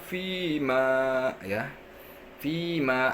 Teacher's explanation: Fima ada ya sukun ya, didahului oleh huruf yang berharokat kasroh. Fi dibaca 2 harokat. Ini mad asli atau disebut juga mad tabi'i.